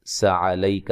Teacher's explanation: کاف کو باریک پڑھیں گے، لمبا نہیں کرنا